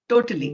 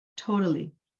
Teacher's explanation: It's going to be softly said in a non-Indian accent, but whereas in an Indian accent, we're going to put all the stress on the T's, right? Like totally, Yeah.